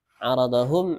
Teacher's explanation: idhar syafawi, min sukunnya dibaca jelas.